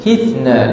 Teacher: Hithna, lidah berada di antara dua gigi.